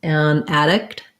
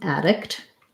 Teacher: first syllable stress, black cat vowel. Second syllable has the lax if vowel, and addict.